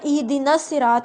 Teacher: ایسا حمزہ ہوتا ہے جو کلام کے درمیان میں سکپ ہو جاتا ہے، یعنی آپ اس کو پڑھتے نہیں ہیں، آپ لکھا ہوا ہوتا ہے، اور حمزہ وصلی کی حرکت ہمیشہ زیر ہوتی ہے، ٹھیک ہے؟